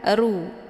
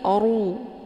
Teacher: Ru ini hukum bacaannya adalah tafkhim, yaitu ra yang mesti dibaca tebal karena ra ini berharokat zumma. Cara bacanya, posisi pangkal lidah terangkat ke langit. Oru, bukan ru, tapi oru, ya.